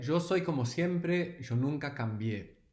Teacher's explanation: No, this is the way in El Río de la Plata, this part of Latin America around Buenos Aires and Montevideo, in Argentina and Uruguay, the Y and the double L has this sh or j sound